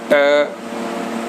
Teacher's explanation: इसमें ट अघोष अल्प प्राण है